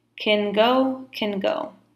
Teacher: can with the weak form kin